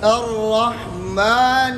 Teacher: نیر، یہ نون کو جو ہے نا کیا نام ہے، اس کے زیر کو بھی ناک میں نہیں پڑیں گے، نون کے زیر کو بھی ناک میں نہیں پڑیں گے، نون کے زیر کو باریک پڑیں گے، نیچے کی طرف اس کو لے جائیں گے. اور جب را کے ساتھ ملائیں گے تو را کو شروع سے موٹا کر کے آخر تک موٹا پڑیں گے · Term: را مشدد